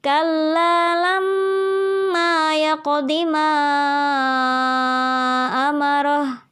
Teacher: gunanya atau dengungnya di bagian lama disana kita tahan dua harokat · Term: ghunnah musyaddah